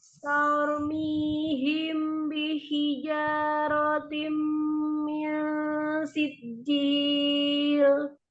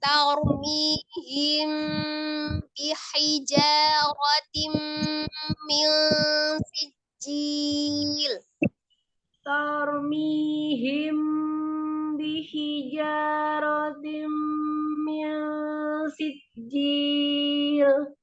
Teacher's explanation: Tahan mim sukun ketemu dengan baknya ikfa safawi.